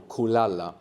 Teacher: we have the accent on the penultimate syllable. No, the second last syllable.